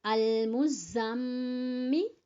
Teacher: غنہ کریں گے میم پر کیونکہ میم مشدد اور نون مشدد پر غنہ ہوتا ہے